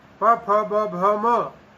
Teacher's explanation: पु पवर्ग प फ ब भ म ये जो 5 ध्वनियां हैं, ये ध्वनियां और उपद्मानीय ध्वनि, इन सब का उच्चारण स्थान ओष्ठ होता है, होठ होते हैं। होठों से विविध प्रकार के प्रयत्नों के द्वारा इन सब ध्वनियों का उच्चारण किया जाता है।